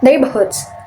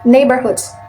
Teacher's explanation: The British one is non-rhotic, but in American, it's rhotic. · In British we said neighborhoods, but in American we said neighborhoods. The British one is non-rhotic, but in American is rhotic.